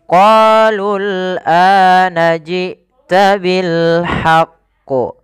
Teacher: Pada lafal qalul ini qa panjangkan 2 harakat karena ia mad tabi'i. Kemudian lul ini tidak boleh dipanjangkan karena waw alifnya dianggap tidak ada, langsung ke huruf lam yang disukunkan.